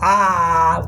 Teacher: विवृत स्वर, मुख पूरा खुला है, पूरा खुला, आ बोल के देखिए ना, पूरा मुंह खुल जाता है, ठीक।